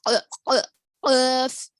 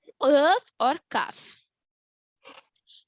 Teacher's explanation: क़ाफ और काफ अक्साउल लिसान से अदा होते हैं, जिसको जबान की जड़, last part of the tongue कहा जाता है। Last part of the tongue जो ऊपर के तालु को लगने से अदा होते हैं।